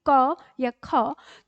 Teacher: क और ख के बाद जो हमारे मुख से अ अ जो निकल रहा है हमें इसे रोकना होगा यानी इसमें अब स्वर शामिल नहीं है तो जब हम इसको